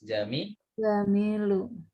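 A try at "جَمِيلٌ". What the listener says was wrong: Jamilun, pakai tanwin. Jamilun.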